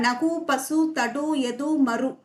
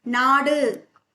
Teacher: முற்றியலுகரம்னா அந்த ஒரு மாத்திரை அளவு குறையாம ஒரு மாத்திரை அளவே ஒலிக்கும்